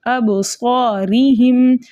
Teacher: صاد کو ہم نے موٹا کر کے پڑھیں گے، منہ بھر کے پڑھیں گے، اور الف کو کھینچ کر پڑھیں گے